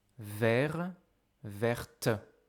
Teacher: to have a final consonant that you don't hear at the neutral or masculine form, but suddenly you hear it at the feminine form